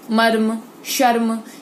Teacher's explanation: इन शब्दों में र जो है वो स्वर रहित है, मतलब ज्यादा उस पर जोड़ नहीं डाला जाता। इस स्थिति में शब्द का पहला वर्ण पूरा होगा, र आधा होगा और तीसरा अंतिम वर्ण भी पूरा उच्चारित होगा, जैसे मर्म।